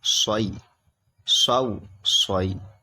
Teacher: یہ صاد نکلے گا، سیٹی جیسی آواز نکلے گی